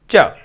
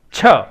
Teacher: छ महाप्राण ध्वनि है, यानी ज्यादा प्राणवायु की आवश्यकता होती है, उसको हम यूं महसूस कर सकते हैं। छ और च, अब च में तो नहीं आई, छ में एक एयर पफ आया है